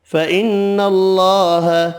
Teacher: نون مشدد پر غنہ کرنا ہے